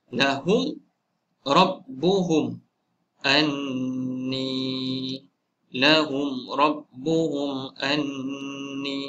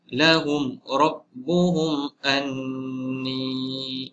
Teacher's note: Jadi selain mim dan ba, jadi izhar syafawi. Mim mati bertemu ra, izhar syafawi tidak dibaca panjang.